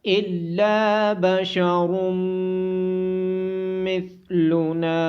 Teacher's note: الا بشر مثلنا، لام کے بعد الف مدہ اور نون کے بعد الف مدہ ہونے کی وجہ سے ان دونوں کو لمبا کیا جائے گا۔ را کو موٹی آواز کے ساتھ پڑھا جائے گا۔ میم مشدد ہونے کی وجہ سے اس پہ غنہ کیا جائے گا۔